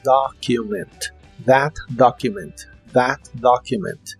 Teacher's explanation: la o de document se pronuncia como una a profunda